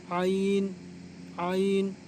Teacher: आइन जो है वो हा की तरह दरमियानी हलक से निकलेगा।